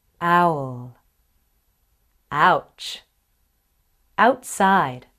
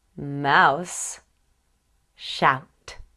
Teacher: your tongue moves from front low ah to back high oh in a very big movement your jaw will move a lot too the lips move from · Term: ow sound